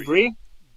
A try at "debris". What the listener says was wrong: S is silent.